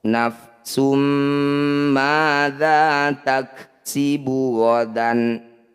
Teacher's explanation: Dumah tanwin bertemu mim, disebut bacaan idgham bi gunnah. Bunyi dumah tanwinnya langsung masukkan pada mim, dengungkan 2 harokat.